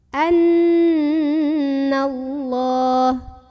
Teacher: Nun yang bertasydid maka cara membunyikannya didengungkan ditahan kurang lebih dua harokat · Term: ghunnah musyaddadah